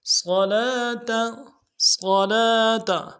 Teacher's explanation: صاد کو موٹا ادا کریں گے